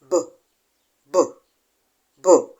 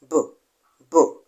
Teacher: you will notice that there is a vibration in your vocal cords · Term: voiced consonant